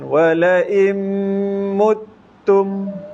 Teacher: nun mati bertemu mim kan idgham maal ghunnah